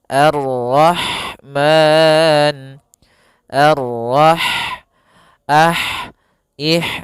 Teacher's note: Ha dia memiliki sifat hames. Yaitu maka harus mengalirinya nafas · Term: sifat hamas